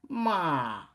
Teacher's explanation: o quarto tom, que ele é totalmente decrescente. Má, ele não recupera como anterior, né?